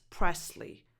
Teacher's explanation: Presley. So I pronounce this last name with a voiceless S, as if it was press with a double S.